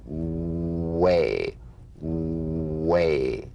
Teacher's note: The W is a vowel-like sound that begins where the number 1 vowel ends. Bring the lips to the smallest opening and precede the following vowel with a resonance. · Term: labiovelar consonant